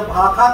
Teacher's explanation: जो सा है, मूर्धन्य सा जिसको कहते हैं ना, वो खा जैसा उच्चारित होता है